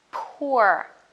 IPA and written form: pʊə (poor)